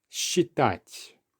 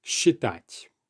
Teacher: in Russian, when you have the letter S followed by ch, you usually pronounce it as a sh sound